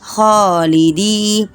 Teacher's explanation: یا ساکین سے پہلے آپ دیکھیں زیر ہے، دال کے نیچے ہے تو یہ یا مدہ ہے، اس کو کھینچنا ہے